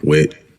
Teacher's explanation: It often becomes a glottal stop, just like T does in general American English in certain contexts, like at the end of a word.